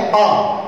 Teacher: आ का उच्चारण करते ही हमारा मुंह सर्वाधिक खुल जाता है, आ आई ए और आ, तो आ खुलते ही हमारा मुंह सर्वाधिक खुल जाता है। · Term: विपरीत स्वर